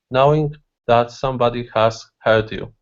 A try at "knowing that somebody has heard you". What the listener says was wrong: Okay, so don't stop after knowing. Okay, so knowing that somebody has heard you. One sound.